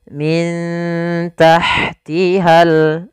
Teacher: nun sukun bertemu dengan huruf ta sebagaimana tadi kasratain bertemu huruf Ta Maka cara membacanya disamarkan kepada huruf tnya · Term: Ikhfa